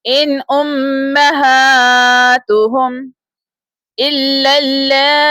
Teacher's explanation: امہ میم کے اوپر تشدید سائن ہے، یاد رکھیے گا میم مشدد پر ہمیشہ غنہ ہوتا ہے۔